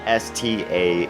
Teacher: It's as if we stuck an L and a Y together and hardly pronounced the L.